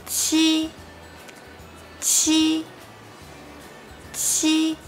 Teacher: when you pronounce this sound, you need to exhale more strongly. Everything else is just the same as ji.